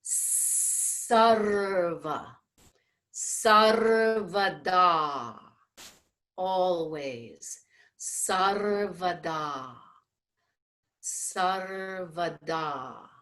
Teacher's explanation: the dental sa, which is a result of the tip of the tongue aiming towards the front top teeth